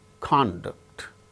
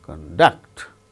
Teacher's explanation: they gain stress on first syllable when they are used as nouns or adjectives the second syllable is stressed when they are used as verbs